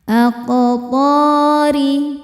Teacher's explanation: Sebab qof sukunnya sukun asli dan ada di tengah bacaan. Cara bacanya dipantulkan dengan pantulan yang kecil. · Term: qalqalah sugra